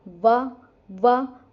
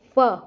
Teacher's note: जिसमें दांत और ओष्ठ दोनों ही मिले तो इनको कहते हैं दंतोष्ठ्य वर्ण, जैसे व और फ।